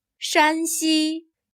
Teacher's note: Here 山 has a high level tone.